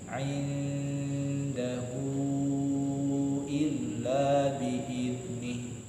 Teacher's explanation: Di situ ada, kalau baca pakai Latin indahu ya, tapi karena ini tulisannya tulisan Arab dan kita sedang baca Al-Quran, maka dibaca dengan tata cara membaca Al-Quran, sehingga dibaca menjadi indahu. Karena sudah nun sukun bertemu dengan dal, berarti pembacaan sama seperti yang sebelumnya, ikhfa, ditahan 3 harokat. Walaupun nanti ada yang bilang 2 harokat juga, tapi kita coba untuk 3 harokat ya.